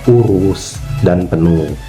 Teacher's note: Untuk posisi lidah itu ee tetap seperti tadi yang saya jelaskan ditarik ke belakang dan agak tinggi. Untuk bibir dia lebih dibulatkan tapi tidak sebulat yang huruf U tinggi atas belakang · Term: vokal U tinggi bawah belakang